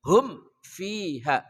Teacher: hum ha hihu dari pangkal kerongkongan.